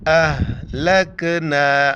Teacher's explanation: ہا کو جو ہے نا سینے سے ادا کرنا ہے